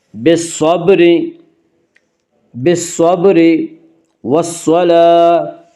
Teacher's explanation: صاد کو پر پڑھیں گے، صاد حروف مستعلیہ میں سے ہے، حروف مستعلیہ 7 ہیں جن کا مجموعہ خص ضغط قز ہے، یعنی خا صاد ضاد غین طا قاف ظا، یہ 7 حروف ہمیشہ ہر حال میں پر پڑے جاتے ہیں۔